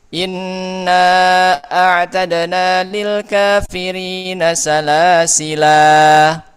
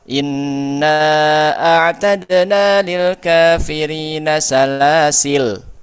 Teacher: Dalam surah al-Insan ayat 4, alif ketika wasal tidak dibaca dan ketika waqaf dibaca dengan dua cara yakni menetapkan alif dan membuang alif